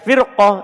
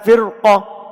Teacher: Ini ro-nya dibaca tebal. Padahal dia terletak setelah kasro. Kasronya asli bersambung langsung dengannya.